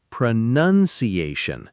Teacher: Notice it's not pro-noun-ciation with an extra own sound in there.